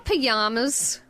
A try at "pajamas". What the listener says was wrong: You know why she doesn't pronounce the J?